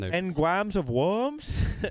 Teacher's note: Because they're a Francophone country, they don't really have the R. Like they don't have rhoticism.